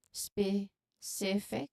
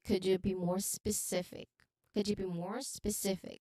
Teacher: Could you be more specific? So you should emphasize the second syllable of specific